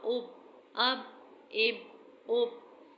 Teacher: جب با پر جزم ہو تو یہ با حرف قلقلہ کہلائے گا اور با کو ہلا کر پڑھنا ہے۔